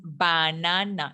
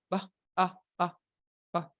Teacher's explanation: el schwa sound es como una expulsión de aire con la boca relajada.